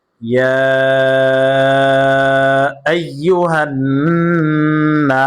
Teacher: নুন আলিফ জবর না, নুনে ওয়াজিব গুন্না হয়েছে এবং পাশাপাশি এক আলিফ টান হবে, মাদ্দে তবাই।